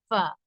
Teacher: மேல் பல்லின் ஓரம் கீழ் உதட்டின் ஈரமான பகுதியில் இணைந்து காற்றை வெளிப்படுத்தும் போது உண்டாகும்